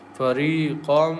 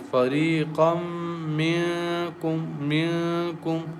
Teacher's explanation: And meme is one of the merging letters, so we merge noon tanween into meme and recite with nasal sound here as fariqam.